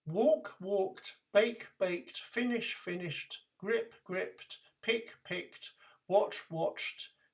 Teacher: Unvoiced means that you cannot sing the sound. It is too difficult to voice a sound d straight after these verbs, so for the past, we speak the sound t at the end.